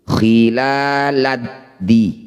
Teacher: Nah, ini disebut bacaan namanya idgham syamsiyah atau alif lam syamsiyah. Cara bacanya alif dan lamnya kita abaikan saja, langsung masuk pada huruf yang bertanda tasydid.